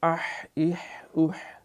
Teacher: یہ ہاں جو ہے یہ گلے سے رگڑتی ہوئی آواز باقاعدہ مسموع ہوتی